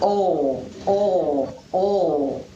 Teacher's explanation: tongue takes a different position to pronounce this allophone of L. The tongue bunches up at the back of the mouth and produces a sound that sounds like oh, oh, oh. Listen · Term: dark or velarized L